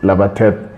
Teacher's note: Now, Lapatet, the way Lapatet is pronounced, it's not quite Lapatet, it's Lapatet, because then you can hear the P sort of go away, it's almost silent, because Kalenjin doesn't distinguish between vocalized and non-vocalized consonants